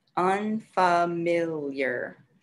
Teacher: So four syllables, and the stress is on the third syllable